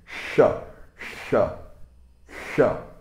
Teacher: O sh, ele é um sibilante cerebral. Significa que você vai pronunciar o sh, de chão, de CH, só que com a língua encostando no topo da boca, do céu da boca.